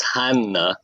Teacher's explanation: it's double n and you kind of pronounce both of those NS